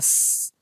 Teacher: سین کے اوپر صفت حمز ہوتی ہے، سانس جاری ہوتا ہے · حمز ہوتی ہے، سانس جاری ہوتا ہے، اس، اور اسی طرح صفت صفیر بھی ہوتی ہے، یعنی کہ سیٹی کی آواز